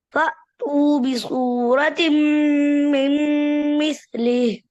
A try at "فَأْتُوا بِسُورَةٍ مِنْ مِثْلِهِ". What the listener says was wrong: بسورة را موٹا کریں فأتوا بسورة من مثله بسورة بسورة را موٹا کریں